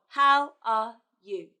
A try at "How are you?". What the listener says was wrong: It should go down at the end. How are you?